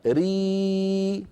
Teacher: لو قلنا ري ومططناها يتولد ياء ري، نعم هذه إذن كسرة صحيحة.